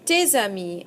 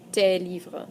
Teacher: make your liaison, your connection between those two words, pronouncing the S and the A together